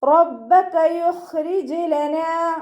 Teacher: റ ഫതഹയാണ്, ഉയർത്തിയിട്ട് ഉച്ചരിക്കുക.